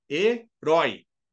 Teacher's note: herói é uma oxítona ele tem tonicidade na última sílaba